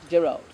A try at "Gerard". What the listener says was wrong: 2 hours, no L. 2 hours.